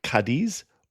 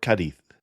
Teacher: that Z as a th sound, which you hear in Castilian Spain